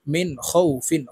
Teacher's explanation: নুন সেকিনের পরে ইজহারের হরফ খ আসছে, তাই এই নুনকে গুন্না ছাড়া স্পষ্ট করিয়া পড়ব। মিম নুন জের মিন খ ওয়াও জবর খৌ ফা দুই জের ফিন মিন খৌ ফিন খৌ একালিপ্টনে ফাকে সাকিন করে ফেলবো, কারণ জবরের বাম পাশে জজমুলা ওয়াও লিনের হরফ।